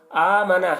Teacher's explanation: حمزہ کو کھینچ کے پڑھیں گے کیونکہ حمزہ کے اوپر کھڑا زبر ہے